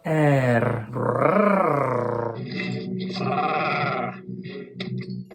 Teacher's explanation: This is called the dog letter, canina littera, because we roll it like a growling dog.